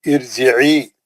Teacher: یہ عارضی زیر را کو پتلا نہیں کر سکتی، یہ را موٹی پڑ جائے گی، یہ را کمپلسری موٹی پڑ جائے گی، کیونکہ یہ زیر اصلی زیر نہیں ہے، یہ عارضی زیر ہے.